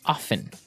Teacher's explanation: they kind of leave out the strong T sound while other people say often that's right both forms are correct